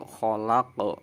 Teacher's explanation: Qalqalah itu huruf yang mantul. Berarti qafnya harus mantul